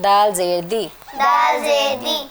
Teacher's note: زبان کی نوک سامنے والے دو دانتوں کی اندرونی جڑ پہ لگے گی